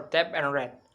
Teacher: The oral passage is blocked by pressing the tongue tip against alveolar ridge.